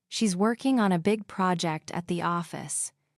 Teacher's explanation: Stress the words working, big project, and office.